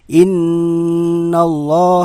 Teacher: allaha disebut dengan guna sebabnya adalah huruf nun bertasydid cara membacanya huruf nun ditahan dua harokat dan dibaca berdengung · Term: ghunnah